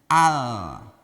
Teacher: Harusnya L, langsung ujung lidah ke gusi 6 gigi atas, gusinya al, jangan au dulu.